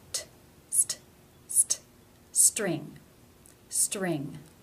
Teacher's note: It is part of a consonant cluster. Therefore, it is pronounced as a real T.